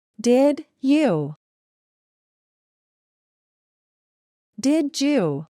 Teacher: cuando la D va seguida de la Y, forman el sonido con el que se pronuncia la J en inglés